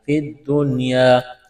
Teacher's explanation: نون ساکن کے بعد یا ہے، حروف اخفا ہے، لیکن یہ جو لفظ ہے یہ مستثنیٰ ہے، یہاں پر غنہ نہیں کیا جائے گا